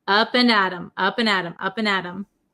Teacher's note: but it's because of the pronunciation uh we say Adam Adam it becomes a flap T so it sounds like a D sound